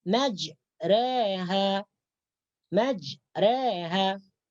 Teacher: Akan tetapi di sini dibaca dengan imalah. Jadi baris fathah itu dimiringkan atau dicondongkan kepada harakat kasrah.